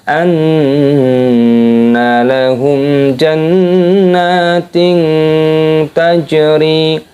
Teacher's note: mim sukun bertemu dengan huruf jim adalah idhar syafawi, dibaca jelas